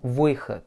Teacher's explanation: Et le O va perdre sa sonorité de O, puisqu'il est hors accent. Выход. Et le D, bien comme un T.